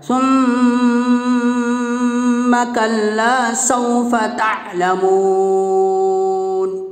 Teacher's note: میم کے اوپر تشدید ہے، میم مشدد میں 1 الف کے برابر غنہ ہوگا، تھوڑی دیر آواز کو ناک میں روکنا غنہ کہلاتا ہے